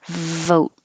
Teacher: vote and you don't release the T